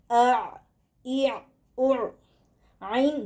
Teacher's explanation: عین گلے کے بیچ والے حصے سے نکلتا ہے، جیسے عین جہاں پر آواز ختم ہو رہی وہاں پر سے عین کا مخرج ہے.